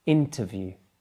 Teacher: Can you hear that the stress is on the first syllable?